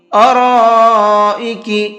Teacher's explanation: بڑا مد بنا ہوا ہے یہاں پر، اس کو 4 سے 5 الف کے برابر کھینچ کر کے پڑھنا ہے